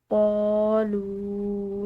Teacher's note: قالوا، لام کے بعد واو ساکن ہے، ایک الف کے برابر اس کو لمبا ادا کریں گے